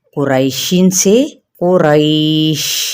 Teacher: اور اگر حرف لین کے بعد والے حرف پر وقف کرنا ہو تو اسے ساکن کر کے وقف کی صورت میں حرف لین پر مد بھی کر سکتے ہیں